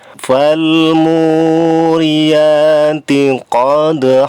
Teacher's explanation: Mu-nya dibaca panjang 2 harokat, ada waw sukun. Sebelumnya berharokat dhammah. Mad tabi'i lamanya 2 harokat.